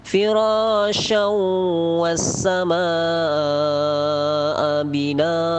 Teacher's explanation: Nah, itu ada as-sama, itu namanya mad wajib, panjangnya 5 harokat. Binaa juga mad wajib, ada 5 harokat.